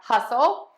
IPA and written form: ˈhʌsəl (hustle)